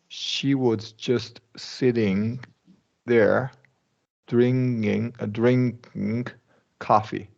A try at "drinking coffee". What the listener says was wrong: Drinking. We always release the K. NK, regular K. So yes, we never release the G in ing, but K always.